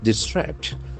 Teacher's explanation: It has got two syllables and the accent falls on the second syllable.